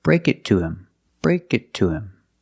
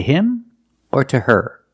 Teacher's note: with both of these words him and her most of the time the H is silent because these are not stressed words